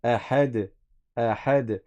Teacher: Quand il y a un soukoun avec l'une de ces lettres-là, tu fais rebondir le son après le soukoun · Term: qalqala